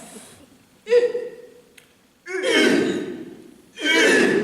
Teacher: La voix U se forme en rapprochant les dents sans les joindre entièrement et allongeant les lèvres en dehors, les approchant aussi l'une de l'autre sans les rejoindre tout à fait.